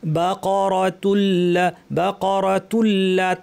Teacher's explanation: নুন সাকিন পর লাম, গুন্না ছাড়া ইদগাম, অর্থাৎ নুনের অস্তিত্ব থাকবে না, লাম পড়তে হবে